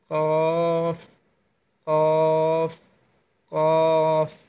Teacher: জিহ্বার গোড়া তার বরাবর উপরের তালুর সঙ্গে লাগিয়ে কফ উচ্চারণ করতে হবে